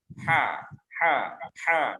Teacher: dia punya sifat namanya rokhawah, ya, suaranya lepas, udaranya lepas, suaranya juga lepas, kendor, lunak, tidak tertahan. Ha, gitu. Kemudian yang ketiga, dia punya sifat istifal, lidahnya tetap di bawah.